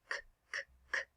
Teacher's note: No vibration. It's an unvoiced consonant.